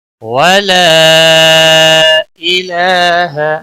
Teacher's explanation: ولا مد منفصل ہے، تین الف کے برابر کھینچ کر پڑھیں گے